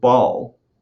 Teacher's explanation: I got to keep my lips together. I got to start my expiratory airflow and adduct my vocal folds. And then I have to build up pressure and release that. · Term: B sound